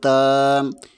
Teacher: تا کے اوپر کھڑی زبر ہے، اسے بھی 1 الف کے برابر کھینچ کر پڑھیں گے